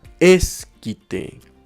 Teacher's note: su acento prosódico se ubica en la penúltima sílaba. Significa que es una palabra grave, pero como termina en vocal, no lleva el acento ortográfico o tilde.